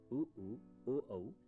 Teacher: अ जिह्वा के मध्य भाग से तथा उ उ, ओ औ जिह्वा के पिछले हिस्से से उत्पन्न होते हैं।